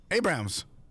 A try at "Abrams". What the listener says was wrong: Abrams, not Abrahams.